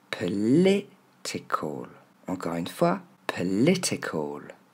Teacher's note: Regardez, c'est pas po, c'est un E au début, P. Et ensuite, on a nos deux sons E pour la lettre I.